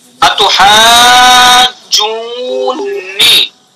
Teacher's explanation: اس کی اصل ہے اتحاجوننی، دو نون، ننی ہے یہ، دو نون ہے، پہلا بھی متحرک دوسرا بھی متحرک، تو پہلے کا دوسرے میں ادغام کیا